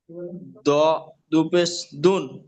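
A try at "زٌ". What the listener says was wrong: এটা দ না, এটা জ, জ। বুঝতে পেরেছেন? র, এই ত, জ।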